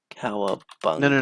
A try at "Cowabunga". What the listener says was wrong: No. It's Cowabunga. You got to get the emphasis right, bro.